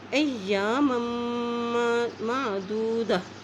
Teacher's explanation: اب میم کی دو زبر کو اس میم کے ساتھ ملانا ہے کیونکہ اس کے پاس شد ہے اور جب میم کے پاس شد آتی ہے تو وہاں پہ غنہ کریں گے